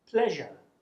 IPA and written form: pleʒə (pleasure)